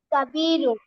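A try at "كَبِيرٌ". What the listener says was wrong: Right.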